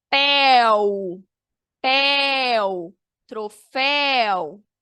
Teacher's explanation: Ditongo aberto. Percebe-se que, ó, a palavra, a sílaba abre mesmo.